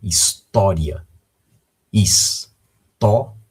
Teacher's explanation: nós temos aí a sílaba tó, a sílaba tônica to. E esta palavra terminando com um ditongo, ria.